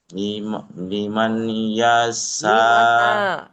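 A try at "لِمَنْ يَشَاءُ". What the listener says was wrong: লিমান না, লিমান কেন হবে? নুন তো বাদ দেবে, নুন সাকিন তো বাদ দেবে, কারণ তাসদিদ সবসময় ডান দিকের হারাকাতের সাথে পড়ে তো। আপনি যদি লিমান বলেন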